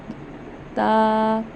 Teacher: हम अपनी जुबान की नोक को ऊपर के दांतों की जड़ से अदा करेंगे। जो हमारे ऊपर वाले दांत हैं उसकी जड़ को उसके रूट्स को टच करेंगे।